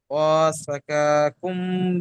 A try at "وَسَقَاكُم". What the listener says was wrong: কাকুম হবে না, ক কুম। ক তারপরে কাপ, প্রথমে কপ তারপরে কাপ। ক কুম। ক কুম।